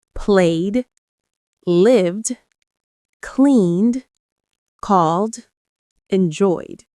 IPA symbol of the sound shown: d